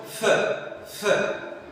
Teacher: There is no vibration, so it is voiceless.